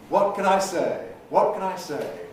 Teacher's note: You hear what, you hear say, you miss can I in the middle.